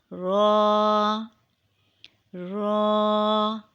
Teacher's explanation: a heavy sound later but sometimes light depending on the location it is pronounced when the back part of the tongue touches the upper gums of the top front four teeth